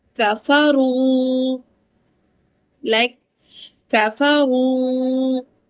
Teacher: whenever raw carries damma, it is read heavy.